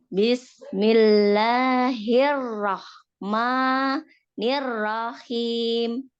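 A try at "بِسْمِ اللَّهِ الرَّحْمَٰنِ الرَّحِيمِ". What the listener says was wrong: Tapi jangan putus. Tadi di ma putus, jangan putus.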